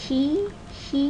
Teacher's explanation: the front part of the tongue is involved and it's high